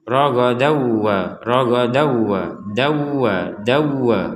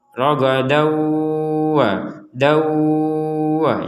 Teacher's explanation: Jadi rongga hidung kita berdengung dulu baru ke wa. Ragadau, rongga hidung berdengung baru wa, seperti itu. · kalau sekedar masuk tanpa dengungan maka akan menjadi ragadawa